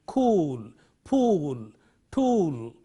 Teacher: another long vowel in English is O ooh as you have in cool